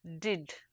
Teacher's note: contact between the tip of the tongue and the ridge that is just behind the upper teeth